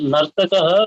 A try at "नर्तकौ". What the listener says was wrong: Nartakau. That's not Nartakaho. If you say Nartakaho, then Visarg, you have to put Visarg. Okay, because in Sanskrit now, whatever is written, you have to pronounce that that thing exactly.